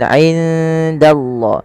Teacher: Samarkan nunnya kepada huruf dal karena ia ada bacaan ikhfa yang di mana suara nunnya samarkan kepada huruf dal. · Lafal Allah bila didahuluan fathah ditebalkan